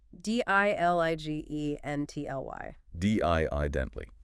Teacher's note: 4 syllables, stress on the first.